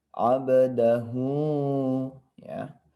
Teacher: ada mad sillah qasirah ya, di mana ada dhammah terbalik, maka ini wajib dibaca panjang sebanyak 2 harakat ya.